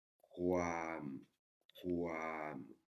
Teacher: le K qui racle un peu la gorge, et une voyelle longue, et wo, wen, et plus le son W, donc ça fait le son kwam, kwam, ok.